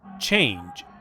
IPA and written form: tʃeɪndʒ (change)